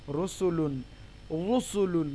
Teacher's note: যদি রয়ের উপরে পেশ থাকে তাহলে সেক্ষেত্রে র মোটা হবে। ঠিক আছে, যেমন রুসুলুন, যেমন র পেশ রু, সিন পেশ সু, লাম দু পেশ লুন, রুসুলুন, রুসুলুন মোটা হবে, রুসুলুন, রুসুলুন।